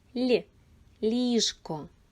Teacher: в цьому слові перший звук м'який ль ліжко